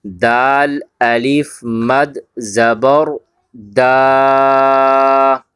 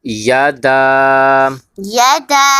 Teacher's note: دال کے بعد الف ہے اور الف کے اوپر مد ہے، تو ہم نے اسے ہلکا سا 3 الف کی مقدار کھینچ کے پڑھنا ہے